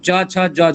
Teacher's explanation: केवल संघर्षी की अगर बात करेंगे, चूंकि संघर्षी भी है और स्पर्श के अंतर्गत है, तो इसलिए स्पर्श संघर्षी हो गया।